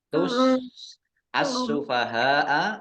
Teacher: alif lam syamsiah karena tidak dibaca langsung masuk ke huruf berikutnya yaitu Sin sinnya dibaca dobel